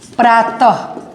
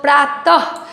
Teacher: जब लास्ट में हम तह बोलते हैं तो ह का भी उच्चारण हो रहा है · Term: विसर्ग